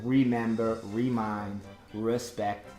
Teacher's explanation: vocês às vezes falam remember ou remind, porque você tenta usar aquele R caipira